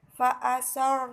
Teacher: cara membacanya harus ditebalkan atau dengan bibir dimonyongkan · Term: ra tebal